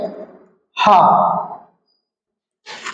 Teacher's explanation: तो हा का उच्चारण स्थान कहां से होता है? कंठ से होता है, इसे काकल्य वर्ण भी कहते हैं।